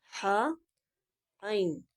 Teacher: وسط حلق یعنی حلق کا درمیانی حصہ، درمیان سے 2 حروف ادا ہوتے ہیں